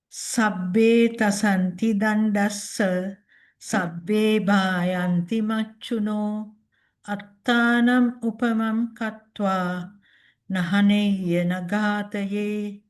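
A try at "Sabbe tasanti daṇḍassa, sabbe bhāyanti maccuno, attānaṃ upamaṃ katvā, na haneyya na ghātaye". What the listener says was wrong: Yeah, very nice.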